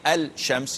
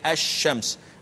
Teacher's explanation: the L is not pronounced and you cannot pronounce it because pronouncing it would be wrong